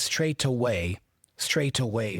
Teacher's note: in British English in general, there is a tendency for the T to be pronounced more as a true T.